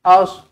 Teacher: sod pastikan baca tebal, jangan as.